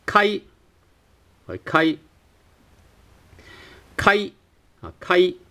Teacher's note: It's a very short A sound and then a very short I sound, which produces something like the I. So like right without.